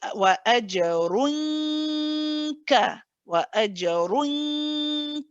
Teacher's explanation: We let our back of the tongue go to the place of kaf. We press on it, and then we carry on. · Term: ikhfa haqiqi